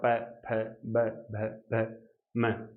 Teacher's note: ये दोनों ओष्ठ टकराएंगे। ओष्ठ टकराने से वायु जो बाहर निकलेगी, उससे क्या होगा, आपके प वर्ग बोला जाएगा।